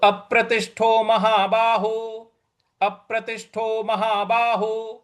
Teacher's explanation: हमको प है उस पर बल लगाना है अप्रतिष्ठो प्रतिष्ठो यहां त के बाद जो षटको वाला श है उस पर भी हमको बल लगाना है तो अप्रतिष्ठो अप्रतिष्ठो अप्रतिष्ठो इस प्रकार से बोलेंगे तो अप्रतिष्ठो महाबाहु